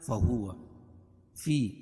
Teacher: یا ساکن سے پہلے زیر ہے اس لیے یا مدہ, اس کو ایک الف کے برابر کھینچ کے پڑھیں گے